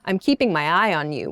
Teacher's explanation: I'm keeping my eye on you with that downward intonation sounds suspicious